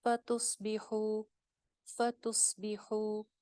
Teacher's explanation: فتصبحو، فتصبحو، تس اگین سواد موٹا، بی کو لمبا نہیں کرنا، خو ایک الف لمبا، واو مدہ ہے